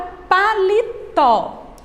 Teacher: Na palavra paletó, nós temos aqui a sílaba forte é a última.